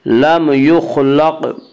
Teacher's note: قاف میں قلقلہ ہوگا. قاف حروف قلقلہ میں سے ہے, حروف قلقلہ پانچ ہیں جن کا مجموعہ قطب جدن ہے, یعنی قاف طا با جیم دال.